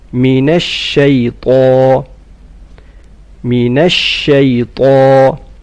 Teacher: طاء in شيطان is full mouth.